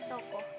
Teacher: bunyi O dengan ciri-ciri agak rendah, belakang, bulat